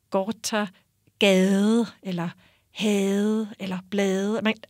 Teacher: det vi kalder det bløde D, det mjuka D, som er ikke helt sådan som det islandske, men det er den der lidt mere som på engelsk i this og that.